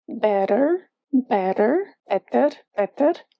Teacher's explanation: Can you feel a soft trilling of the tongue? This is what we're looking for in Portuguese with a soft R.